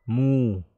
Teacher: Mu ini mad tabi'i ya, mad tabi'i. Mu kita baca dua harokat kan? Dhammah bertemu waw sukun, mu. Ini juga mu.